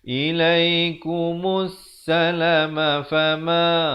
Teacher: Di sini alif lam syamsiah, lamnya tidak dibunyikan. Jadi hamzah wasal dan lam ini silent.